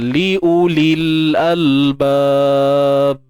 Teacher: Jadi kaedah bacaannya di sini, sukun yang pertama tu iaitu pada ya di sini tak perlu dibaca dah. Digugurkan bunyinya. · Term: iltiqa sakinain